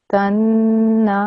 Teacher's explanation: creating my ghunna sound and making sure that my noon sound is 2 seconds long